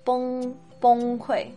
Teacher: Sometimes it's pronounced with a more o-ish sound in the vowel